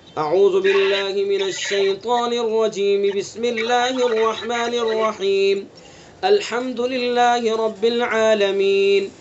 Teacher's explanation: اعوذ باللہ من الشیطان الرجیم کو بسم اللہ سے ملائیں گے اور بسم اللہ الرحمن الرحیم پر وقف کریں گے، رک جائیں گے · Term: سل وقف